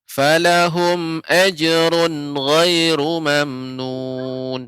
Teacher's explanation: Jangan sampai nunnya menjadi memantul